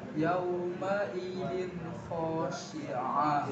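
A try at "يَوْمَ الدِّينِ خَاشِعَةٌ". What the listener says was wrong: Z-nya kurang nih, Z-nya nih.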